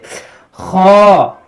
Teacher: अदा होता है हलक के ऊपर वाले हिस्से से।